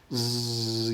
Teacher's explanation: go your larynx doesn't do anything but if you go z your larynx is buzzing that's voicing